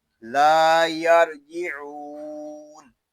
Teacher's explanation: لام کو ایک الف تک کھینچ کر پڑھیں گے کیونکہ یہاں الف مدہ ہو رہا ہے